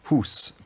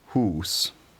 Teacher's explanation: the vowel is more clipped than it probably was in Old English, where it was a long vowel with a short vowel that it contrasted with.